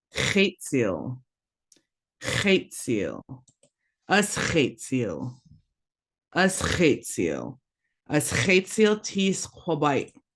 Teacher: Remember that raspy kind of H. It's not a regular H sound, so make sure make sure it sounds like you're trying to get phlegm out of your throat.